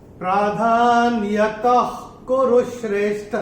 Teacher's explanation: तीसरे चरण में त के बाद विसर्ग के बाद का अक्षर है क, और विसर्ग के बाद जब क या ख आता है तो विसर्ग का उच्चारण होता है ख।